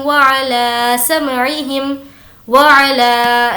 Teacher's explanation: ला को अच्छे से खींचेंगे क्योंकि उस पर मद है